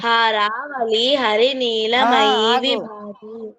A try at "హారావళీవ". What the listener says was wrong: హారావళి వా ఉంది, వా పలకల.